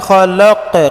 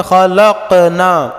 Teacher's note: قاف پڑھیں گے تو ہلکا سا جھٹکا دیں گے لاسٹ میں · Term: قلقلہ